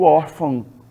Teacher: eu digo órfão, né? Nasalizando aí essa vogal